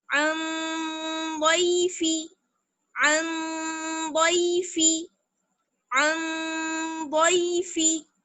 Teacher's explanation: ضاد بھی جو ہے وہ حروف اخفا میں سے ہے، اس لیے ہم نون کی آواز کو چھپا لیں گے. ناک میں لے کر جائیں گے آواز اور ایک الف کی برابر ٹھہریں گے